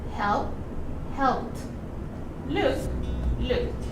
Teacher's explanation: The chart says that all the verbs that finish with P, K, F, PH, SH, CH, double S, C, and X, we have to add ed. But the sound is like a T